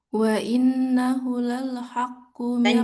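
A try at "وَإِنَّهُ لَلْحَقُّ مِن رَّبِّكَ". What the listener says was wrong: Panjang. Wa innahu, 2 harkat.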